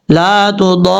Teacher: را کے اوپر شد ہے اس لیے را کے اوپر فوکس کر کے پڑھا جائے گا. پہلے ضاد کو لمبا کریں گے الف کی وجہ سے لمبا کر کے پھر را کے ساتھ کنیکٹ کریں گے